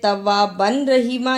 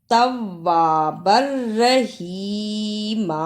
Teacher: با پر دو زبر ہیں اور را پر شد، با کو را سے ملانا ہے